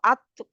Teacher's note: ज़ुबान की नोक जब ऊपर वाले वही ता का मखरज ये जो मैंने अभी बताया वही है। ऊपर वाले 2 दाँतों के पीछे लगती है वो जो लाइन सी है वहाँ पे ये मसूड़े के साथ, जड़ के साथ लगती है, ठीक है? अ, तो तो वहाँ पे जब आप अत कहेंगे तो आपको पता चल जाएगा कहाँ लग रही है, ठीक है?